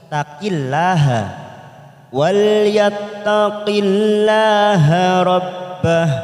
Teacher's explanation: Ada lam jalalah didahului kasroh, maka kita baca tarqiq